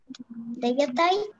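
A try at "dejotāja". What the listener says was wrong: Деятая. Деятая. Да, девочка у нас с буковкой А на конце. И старайтесь произносить тоже длинно. Деятая. У нас в латышских языках ударение всегда идет на первый слог, но мы, когда есть знаки долготы, мы все равно их стараемся тянуть, да? Дайотая, да, по-латышски это звучит.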